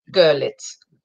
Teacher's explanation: The emphasis is on the first syllable. Görlitz. So it's like a U, Görlitz.